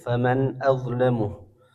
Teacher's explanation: dibaca jelas nunnya tanpa dengung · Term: izhar